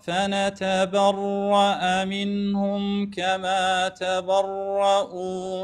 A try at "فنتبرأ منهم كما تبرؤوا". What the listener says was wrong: شوي شوي شوي شوي دقيقة اختلست الحركات شوية. لا تستعجل على الكسرات،